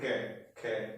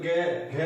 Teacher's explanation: अब देखो गे घे, लंबा खिंच रहा है ना, वाइब्रेट हो रहा है, आपको महसूस होगा यहीं पे गे घे, यहाँ पर आपको वाइब्रेट हो रहा है, क्या बोलो के खे, कुछ नहीं होगा। और जो गे घे अने बोलो, यहाँ पे आपको वाइब्रेट, यहाँ पे वाइब्रेट होगा आपके। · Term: घोष